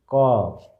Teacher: यदि कंठ से आता है आवाज, कंठ से क, तो यहाँ से निकलता है तो इसको कंठस्थ बोलते हैं